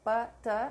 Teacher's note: Implode the sounds of P and T. They're not explosive, so P, T, not P and T. Make sure there is no puff of air.